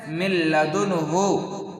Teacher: تو نون ساکن ہے اور لام حروف یرملون میں سے ہے، تو یہاں پر غنہ کرنا نہیں ہے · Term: ادغام